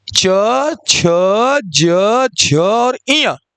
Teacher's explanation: तालू से उच्चारण किए जाते हैं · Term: च वर्ग